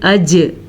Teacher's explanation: جیم پہ کلکلا کرنا ہے، کیونکہ جیم حروف کلکلا میں سے ہے اور جیم کے اوپر جزم ہے، اسی وجہ سے اجمعین کے بجائے ہم اس کو پڑھیں گے اج، ٹھیک ہے، اجمعین۔